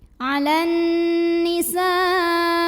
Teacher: Kemudian hamzahnya yang i dalam satu kata yang sama, yaitu kata an-nisa'i. Maka sinnya dipanjangkan, boleh 4, boleh juga 5 harokat. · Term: mad wajib muttasil